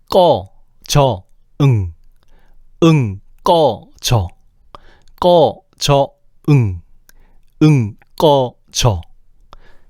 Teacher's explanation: 기역과 이응이 여린 입천장을 찍고 지읒이 센 입천장을 찍는 게 느껴지지?